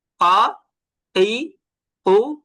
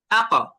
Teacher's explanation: যখন আক বলেছি তখনই কলকলা হলো। কেন কলকলা হলো? কারণ কফের উপরে সাকিন ছিল, এই জন্যই কলকলা হয়েছে।